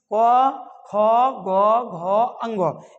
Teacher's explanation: क वर्ग मीन्स क ख ग घ अंग इन सब का उच्चारण कहां से होता है आपका कंठ से होता है